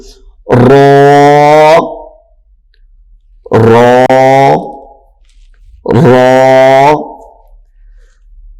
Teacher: یہاں پہ ہم را کو موٹا کر کے پڑھیں گے